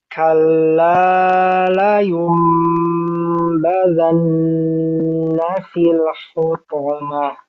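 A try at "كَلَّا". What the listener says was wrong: Kalla terlalu panjang tadi. Kalla.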